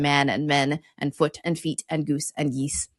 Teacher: And that's the difference there is when it's also called an I mutation in English, when a vowel change, where a back vowel moves forward in the mouth or a front vowel becomes higher